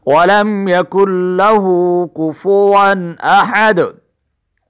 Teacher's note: کوفو ون پہ غنہ نہیں کریں گے، اس لیے کہ یہاں پر اس کے آگے تنوین کے بعد آگے حروف حلقی میں سے حمزہ آ چکا ہے، اس لیے ہم اس کو انداز سے پڑھیں گے، وَلَمْ يَكُنْ لَهُ كُفُوًا أَحَدٌ، وَلَمْ يَكُنْ لَهُ كُفُوًا أَحَدٌ۔